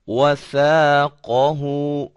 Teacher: जुबान के सिरे को, जुबान की नोक को सनाया उलिया, जो कि ऊपर वाले दो दांत होते हैं, उनके किनारे पे लगाते हैं तो सा अदा होता है।